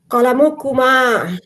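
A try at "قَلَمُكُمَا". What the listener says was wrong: হ্যাঁ, মাশাল্লাহ।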